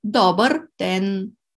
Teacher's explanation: we put the stress on the first syllable